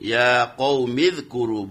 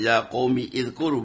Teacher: hamzah wasal itu hamzah yang ketika depannya ada kalimat maka hamzah itu tidak dibaca